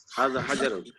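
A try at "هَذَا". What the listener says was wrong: একটু লম্বা করে পড়া দরকার ছিল না? হাযা হাযা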